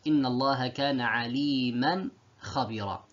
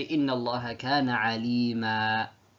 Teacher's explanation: if I want to stop on aliman, I stop on the alif. · And so there is no noon sakina. You can't see the noon sakina written, but it's pronounced.